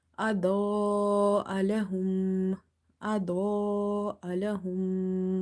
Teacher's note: Dod is heavy from the musta'aliya letters, and this alif is madde muttasil, so you will stretch up to 2.5 alif.